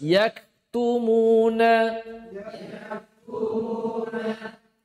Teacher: kaf dia memiliki hames karena bertemunya pangkal lidah dengan langit-langit bagian lunak dan keras. Makanya dia keluar hames.